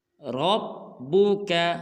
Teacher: اس میں را کو پر ادا کریں گے